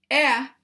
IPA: ε